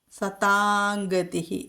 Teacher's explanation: അനുസ്വാരം കഴിഞ്ഞിട്ട് ക എന്നുള്ള അക്ഷരം വന്നു ക വർഗ്ഗത്തിലെ മൃദു അക്ഷരം അതുകൊണ്ട് അവിടെ അനുസ്വാര സ്ഥാനത്ത് ങ്ങ എന്ന അനുനാസികം ചൊല്ലണം